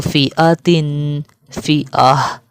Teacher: جب گول تا آ جائے تو یہ گول تا کو ہم ہا میں بدل دیتے ہیں